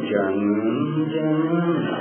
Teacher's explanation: Jangan nun mati jumpa dengan jin, ikhfa hakiki. Sebab tu dia kena dengung. Jangan. Dengung tu lidah mesti tongkat langit, hidung kembang muka kita.